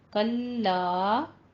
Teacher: لام کے آگے الف بھی ہے، پورا الف ادا کرنا ہے